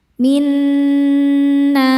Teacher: huruf pertama sukun, huruf kedua berharokat, maka dibaca nun pertama masuk dan dengung.